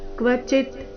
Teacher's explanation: ನತು ಸನ್ಯಾಸಿನಾಂ ಕ್ವಚಿತ್ ಕ್ವಚಿತ್. ಕೊನೆಗೆ ಅರ್ಧತ ಇದೆ, ಕ್ವ ಚಿ ಆದ ನಂತರ ಅರ್ಧತ